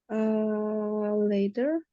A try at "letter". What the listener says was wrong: Ya, a letter. Bukan a later. Kalau kamu bilangnya later itu jadi letter nanti gitu kan. Letter sama letter. Ya mirip-mirip ya. bacanya beda. Kalau ini kan double T, letter,